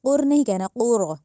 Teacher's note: علمل، علم القرآن، قاف جو ہے اس کو موٹا کر کے پڑھنا ہے، یہ ڈنڈے والی کاف نہیں ہے کہ ہم اس کو کر کہیں، کر نہیں کہنا، قر کہنا ہے۔ دوسرا جو را ہے اس کو بھی موٹا کر کے، یعنی پر کر کے ادا کرنا ہے